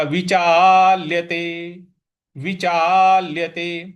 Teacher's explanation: विचा के बाद में जो ल है उस पे हमें बल लगाना है, तो ये हो जाएगा विचाल्यते।